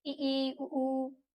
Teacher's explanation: इस संव्रत में क्या होता है, बिल्कुल मुंह बंद करके हम उच्चारण कर लेंगे